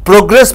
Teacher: When you go in for a verb, gress should be stressed, pro should be lightly stressed.